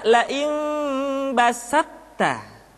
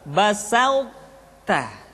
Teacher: ketika mengucapkan to bertemu dengan ta terdengar suara yang menebal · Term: sifat itbaq